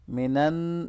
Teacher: यहाँ नून मुशद्दद पे गुन्ना होगा